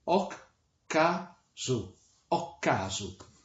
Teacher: la primera K cierra la sílaba anterior, la segunda empieza la siguiente